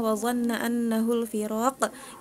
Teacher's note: itu qafnya jangan seperti kaf gitu ya, jadinya qalqalahnya nggak dapet gitu ya